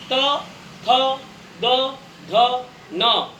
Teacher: ये सभी होने पर जीभ जो है दांत पर जाकर के टच होती है, स्पर्श करती है दांतों को, इस कारण से इनको कहते हैं दंत्य।